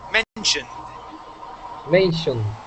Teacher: When it ends with an N, like mention, okay, the ed sounds like a D.